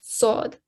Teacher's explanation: So you're still pressing your teeth together, but the top of the tongue is raised to the roof of the mouth to make it a heavy and thick sounding letter sod. So you can try and touch your tongue, raise it to the roof of the mouth, and make sure you give the thick and heavy sound to it, okay?